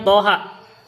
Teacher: Jadi kalau toha bacanya 2 harkat.